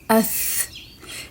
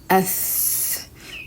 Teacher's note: When you say it's sakin with alif fatha, with a light touch, it's ath. Reader can hear the breath. This breath is hams.